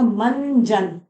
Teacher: मंजन न की आवाज आ रही है